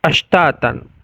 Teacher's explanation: Ashtatal shin juga termasuk rokhawah sekaligus juga hamas. Jadi ada suara yang mengalir dan ada juga nafas yang mengalir.